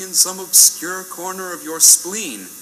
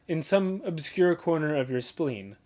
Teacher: he gives spleen a bit more emphasis to catch the point and push it